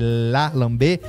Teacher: esse fonema palato lingual assim da língua encostar no céu da boca